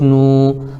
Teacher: واو ساکن سے پہلے نون کے اوپر پیش ہے، اس لیے واو مدہ ہوگا، ان کو تھوڑا کھینچ کر پڑھیں